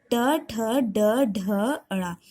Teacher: इन सब का उच्चारण करते समय जीभ मुख के अंदर थोड़ा सा मुड़ जाती है, इसलिए इन्हें मूर्धन्य कहते हैं। इनका उच्चारण स्थान मूर्धा है इसलिए इन्हें मूर्धन्य भी कहते हैं।